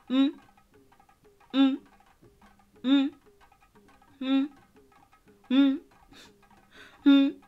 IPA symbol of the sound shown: mmm